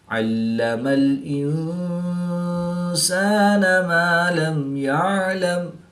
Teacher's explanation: میم ساکن کے بعد حرف با اور میم کے علاوہ حرف یا ہے تو یہاں پر میم ساکن میں اظہار شفوی ہوگا یعنی غنہ نہیں کریں گے بلکہ میم ساکن کو ظاہر کر کے پڑھیں گے